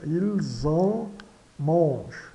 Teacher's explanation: terceira pessoa do plural não é pronunciado e aqui nasalizado, né, ilzom, né, e ocorrendo a ligação com o Z.